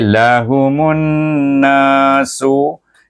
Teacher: mim itu di idgham samsikan dengan huruf nun. Idgham samsi sebab alif lam ini adalah lam samsiah kerana dia bertemu dengan huruf nun, huruf samsiah.